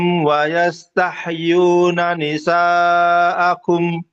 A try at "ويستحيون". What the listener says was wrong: Haknya jangan sampai mantul. Tahyu. Tahyu. Wayastahyu.